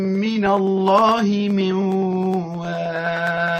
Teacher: من واق نون ساكنة بعدها حرف الواو، ما حكمها؟ حكمها الإدغام مع الغنة